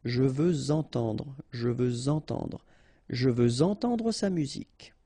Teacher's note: Okay, remember we had the same rule. Even if we've got this X at the end, well, with the liaison it will sound like Z.